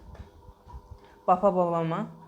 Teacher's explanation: प फ ब भ म ओष्ठ से बोले जाते हैं